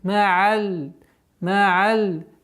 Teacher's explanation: Такой скользящий, непринужденный уход, полноценное произношение звука айн. Гортанный.